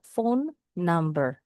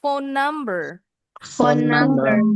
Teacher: Dua kata. N-nya jadi dua kali.